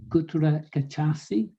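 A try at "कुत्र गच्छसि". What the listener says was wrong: We don't have the doubled consonants in English, but it does make a big difference in Sanskrit whether it's single or double. So you have to kind of hold it for gachasi.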